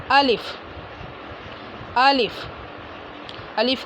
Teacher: अलिफ मुंह के खाली हिस्से से अदा होता है